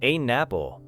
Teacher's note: You see an apple, but you may hear something closer to an apple. The N sound connects with apple. So your ear may feel as though the second word begins with N.